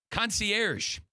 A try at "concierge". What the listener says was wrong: You said concier, not concierge.